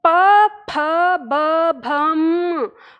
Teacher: इसका उच्चारण हमारे होठों से होता है। हम होठ आपस में मिला के तब हम ध्वनि उत्पन्न करते हैं। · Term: प वर्ग